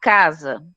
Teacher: No momento que você fala o C com A, você tem a expressão que o C vai ter a função de K. E o S vai ter a função de Z.